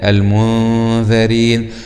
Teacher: وننتبه لمخرج الذال من طرف اللسان مع أطراف الثنايا العليا.